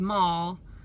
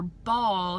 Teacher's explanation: the only difference between the letters M and B is whether or not you're blocking the air off in your nasal passages so M air is coming out of your nose B you